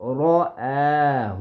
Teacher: را کی آواز پر موٹی اور حمزہ کی آواز باریک